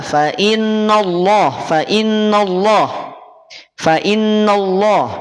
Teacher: lafaz Allah sebelumnya didahului oleh fathah lafaz Allah jadi tebal tetapi Awas nunnya jangan tertarik tebal tetap berada pada posisi tipis